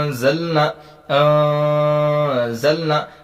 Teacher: اب دیکھیں انزلنا میں ہم کیا قاعدہ پڑھیں کہ یہاں پر لکھا گیا تھا نون ساکن، نون ساکن کے بعد زا جو ہے وہ حرف اخفا کے 15 حرفوں میں سے ہے، تو انزلنا گنہ کے ساتھ 1 الف کے برابر پڑھیں گے